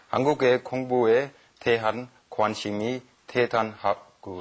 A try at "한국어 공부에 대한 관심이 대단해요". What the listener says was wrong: And it's 한국어, right? Not 한국에, right? Very nice.